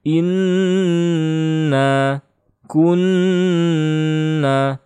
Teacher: Kalau tidak gunnah, inna kunna itu salah. Harus ditahan. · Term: gunnah musyaddah